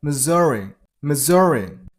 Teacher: This S turns into Z sound, so Missouri. Missouri. Stress on the middle syllable, on Z sound, so Missouri.